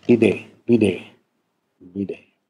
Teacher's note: das zwischenvokalische Konsonant wird geschwächt, liniert und auch stimmhaft. Also Linierung und Sonorisierung. · Das Schwa am Ende verändert sich etwas, das ist etwas angehoben. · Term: fränkische zentralisierte E